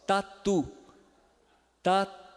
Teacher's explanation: é a ponta da língua encostando logo atrás dos dentes é o t do brasileiro de modo geral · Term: ponto dental